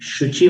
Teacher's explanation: और शुचि, शुचि में भी श का उच्चारण तालु से